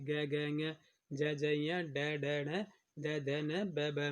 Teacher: जिन ध्वनियों के उच्चारण में स्वर तंत्रियों में कंपन हो वे कहलाते हैं, वे सघोष या घोष व्यंजन कहलाते हैं। देखिए हर वर्ग का तीसरा और चौथा व्यंजन है और पांचवा व्यंजन जो है ये हमारा सघोष व्यंजन कहलाता है।